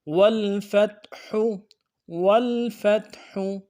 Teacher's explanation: ہا کو گہرائی سے ادا کرنا ہے